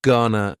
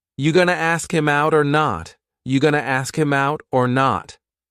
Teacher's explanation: Gonna is generally pronounced with the schwa.